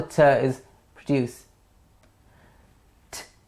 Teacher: t is produced when the tip of the tongue goes behind the top teeth. T. The ridge just behind the teeth.